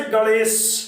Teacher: तालव्य पे वायु को प्रक्षेपित करोगे तो अपने आप सा के लास्ट में सीटी बजेगी, इसलिए इसे सीटी वाला कहने लगते हैं।